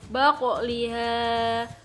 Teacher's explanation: Suatu lafaz dibaca kolkola sughro apabila di dalamnya terdapat huruf kolkola yang berharokat sukun. Cara membacanya dengan memantulkan suara atau makhraj hurufnya dengan pantulan yang tidak begitu kuat.